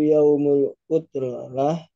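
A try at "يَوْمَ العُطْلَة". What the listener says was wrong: Yaumal Utlah. Ini fathah ya. Yaumal Utlah.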